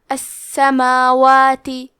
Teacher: کلمت السماوات میں سین کو 2 حرف کے برابر پڑھیں گے کیونکہ اس پہ تشدید ہے. میم پہ کھڑا زبر ہے اور واو پہ بھی کھڑا زبر ہے. یہ دونوں مد الف ہے تو ہم یہ دونوں مد کو برابر سے ادا کریں گے